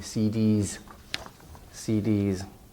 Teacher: abbreviation and de easy voice sound it actually you say D it ends in a vowel E and so the s becomes voiced into Z